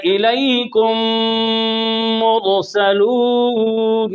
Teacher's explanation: اب ادغام اس لیے کہتے ہیں کہ میم میں داخل ہو رہا ہے، صغیر اس لیے کہتے ہیں پہلا حرف ساکن ہے دوسرا متحرک ہے، مثلین اس لیے کہتے ہیں کہ دونوں ایک جیسے ہیں، تام اس لیے کہتے ہیں کہ میم میں پورا داخل ہو گیا، لہذا بن گیا الیکم مرسلون۔